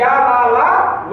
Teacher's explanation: वे व्यंजन जिनका उच्चारण करते समय वायु का अवरोध कम होता है, या वायु मतलब दबाव कम डालती है, वायु का प्रभाव कम पड़ता है, वो हमारे क्या कहलाते हैं, अंतस्थ व्यंजन कहलाते हैं।